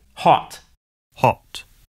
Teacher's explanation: the American O sound is an unrounded vowel, ah, while the British O sound is rounded, aw. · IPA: / hɑt /